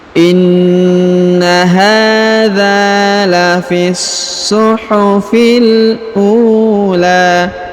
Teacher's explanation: Huruf u dipanjangkan 2 harokat karena di depannya terdapat waw sukun.